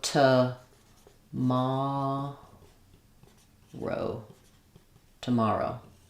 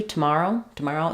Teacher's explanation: the o w does say o like in no or snow so we have the O dip thong